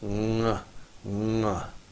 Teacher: say ng, like running, but drop that way back in your throat. Ng, ng, and say it back there.